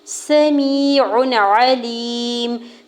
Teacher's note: سمیع علیم، سین کے زبر کو بغیر کھینچے ہوئے ادا کرنا ہے، یا ساکن سے پہلے میم کے نیچے زیر ہے، یا مدہ اور 2 حرکت کھینچ کے ادا کریں گے، عین کے اوپر 2 پیش کی تنوین پر اظہار حلقی ہوگا، یعنی غنہ یا اخفا نہیں کریں گے۔